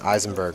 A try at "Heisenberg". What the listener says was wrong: Eisenberg is an I. But they even pronounce it with an H in the movie. And Burning Ben says you pronounce the H, he says.